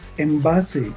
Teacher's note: estamos convirtiendo esa N, que debiera ser clara, en una M